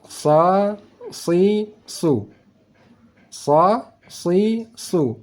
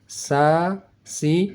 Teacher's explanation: rasakan SH si su SH si su bis bis bis itu huruf Shad suara desis anginnya lebih tebal